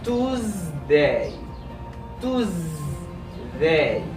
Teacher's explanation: As you can notice, the S has a Z sound.